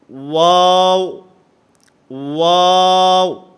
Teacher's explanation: نہ تمام گول کرنے ہیں، آپس کے اندر ہونٹوں کو ملنا نہیں چاہیے. واو، واو، دونوں ہونٹوں کو گول کرنے سے ادا ہوگا.